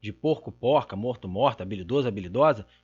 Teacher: nós temos a marca de feminino se dando por uma morfologia concatenativa, anexação do A, mas também se dando pela abertura da vogal. E, só para reforçar, a abertura da vogal nesses casos aqui é submorfêmica.